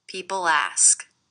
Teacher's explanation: I do hear that L is really linking to the beginning vowel sound. People ask.